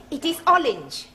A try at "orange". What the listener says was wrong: You really must work at those R sounds.